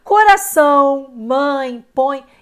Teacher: causa do da da nasalidade aqui né O Sol é nasaão o ar passa parcialmente pelo nariz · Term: ditongo nasal